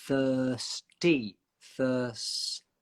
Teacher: So your tongue goes from between your teeth to inside and up to get the S sound. Thirst. And remember, the tongue between the teeth is so short with the th.